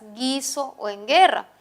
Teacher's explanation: representan el sonido oclusivo GA en las palabras guiso o en guerra. Y como podemos observar, la U no suena